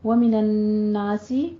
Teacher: نون مشدد ہے، غنہ واجبہ کریں گے، یہاں پہ آپ نے 2 حرکتوں برابر غنہ کر کے پھر آگے بڑھنا ہے، ٹھیک ہے؟ تھوڑا سا اس کو 2 حرکتوں کے برابر لمبا کرنا ہے۔